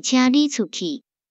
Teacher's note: 若是放伫语句的上尾，出这个字毋免变调